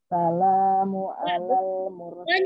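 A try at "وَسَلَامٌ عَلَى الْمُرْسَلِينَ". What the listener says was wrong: Jangan ditinggal. Wassalamun. Wassalamun.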